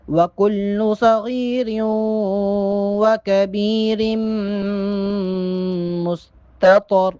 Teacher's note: پہلا جو تا ہے اس کو باریک پڑھیں گے اور تو کو موٹا کر کے ادا کریں گے.